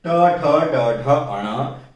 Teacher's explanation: ट ठ ड ढ अण एक ऐसा वर्ग है जिसका उच्चारण स्थान मुंह के सबसे कठोर भाग यानी मूर्धा से होता है, इसलिए इनको हम कठोर व्यंजन भी कह सकते हैं।